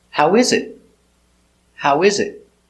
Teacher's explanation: Intonation on is. Intonation goes up on is.